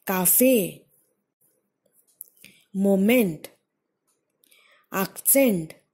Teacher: So all of these words, second syllable is being stressed upon.